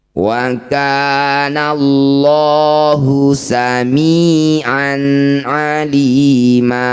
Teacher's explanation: Ketika didahului dumah atau fathah maka lafaz Allah lamnya ini kita baca dengan tebal. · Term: tafkhim